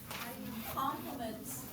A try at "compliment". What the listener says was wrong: You sound like you're saying compliments.